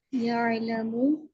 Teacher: आइन को हलक के दरमियान में से अदा करना है